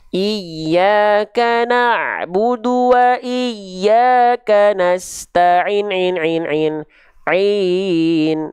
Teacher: Kalau misalnya dia dibaca 4 harokat, ya, berarti seperti kadar melafalkan nasta'in ainnya sebanyak 4 kali pelafalan